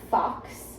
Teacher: Fox is with the teeth on our lips. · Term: fricatives